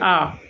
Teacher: যখন আমরা পুরোপুরি খুলে মুখ থেকে উচ্চারণ করছি আ। এই আ উচ্চারণের সময় মুখের ভেতরের শূন্যস্থান আরো বেড়ে যাচ্ছে এবং সর্বাধিক বেশি হচ্ছে। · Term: বিবৃত